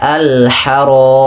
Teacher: Contohnya awalnya alharami karena kita wakaf dibaca dengan mim yang disukunkan sebelumnya ada huruf mad yaitu huruf alif. Maka alharam. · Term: mad arid sukun